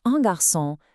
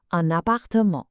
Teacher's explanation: But when you have a word that starts with a vowel, like appartement, the N from un actually links over to it. It creates a smooth N sound, so it sounds like one word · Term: liaison